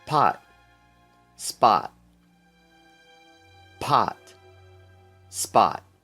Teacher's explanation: a little puff of air escapes out whenever you do those PT or K sounds this little puff of air is called aspiration